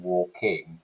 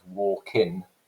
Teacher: whether they were pronouncing the ing velar nasal sound or whether they were dropping that or rather substituting it for an N sound